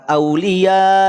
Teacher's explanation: Mad wajib muttasil. Panjangkan 5 harokat. 4 atau 5 harokat. Ketika waqaf boleh 6 harokat.